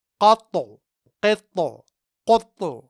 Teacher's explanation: یہاں ان تینوں جگہوں میں ہم نے حرف طا میں قلقلہ کیا کیونکہ طا حروف قلقلہ میں سے ہے اور یہاں طا ساکن ہے۔